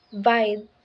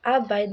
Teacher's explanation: again the stress falls on the second syllable bide making it a bide